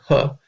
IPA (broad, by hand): h